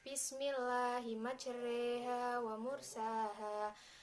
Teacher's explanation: Majroha dibaca majreha sebab ini bacaan imalah